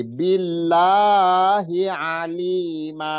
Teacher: Billahi ya, hi-nya enggak, cuman lahnya yang dua harokat. Hi-nya enggak ada dua harokat.